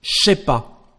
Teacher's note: Sometimes the sound je becomes ch in French.